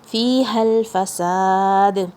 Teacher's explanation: ہا کی آواز حلق کے سب سے نیچے سے، اور یہ لام سے جوائن ہو رہا ہے بغیر شیک کرے ہوئے